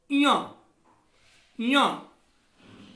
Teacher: जैसे का अंगा जो है तो का वर्ग का वर्ण है, अतः अंगा का जो उच्चारण होगा वो कंठ और नासिका होगा। इया इया इया वर्ण का जो उच्चारण है वो तालु और नासिका होगा, क्योंकि यह च वर्ग का वर्ण है।